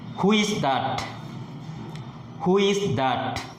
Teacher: Here the pitch rises and falls at the end.